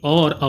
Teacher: ओ और औ जो ध्वनि है कंठोष्ठ्य कहलाती है, यानी ये जो वर्ण है कंठ और ओष्ठ की मदद से बोले जाते हैं।